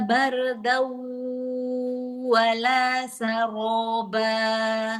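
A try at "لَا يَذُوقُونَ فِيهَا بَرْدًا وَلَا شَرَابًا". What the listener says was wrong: Shin, ro juga tebalkan. Bardau wala syaroba shin.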